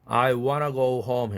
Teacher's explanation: want to가 은 사운드의 영향을 받아서 유성동화로 바뀐 것이죠. 나 닮아라 해서 N으로 바뀌었어요.